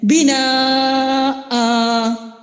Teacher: یعنی دو زبر کی تنوین کو ایک الف سے ہم بدل رہے ہیں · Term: مد العوض